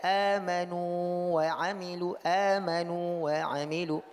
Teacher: waw sukun ini tidak masuk ke dalam huruf waw di depannya. Walaupun tadi dikatakan kalau ada huruf sukun bertemu dengan huruf yang sama jadi idgham, tapi pada huruf mad tidak terjadi idgham.